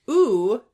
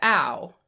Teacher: In the back of the mouth, you had oo swoop down and turn into ow. And that happened because O was pushing up into oo.